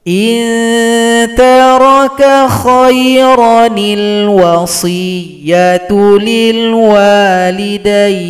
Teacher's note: madwat menjadi pendek saja tanpa Mad kiron menjadi Khair alifnya dibuang ro dibaca pendek Nun kecil menggantikan posisi Hamzah hamzahnya dibuang sajaantikan posisinya sama Nun kecil Nun wiqah namanya barisnya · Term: nun wiqayah